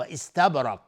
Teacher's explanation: استبرق با قلقله میخواد چون ساکنه. را حکمش استعلاء چون فتحه داره.